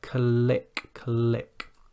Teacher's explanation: you can hear that flicking of the tongue on the top of the mouth there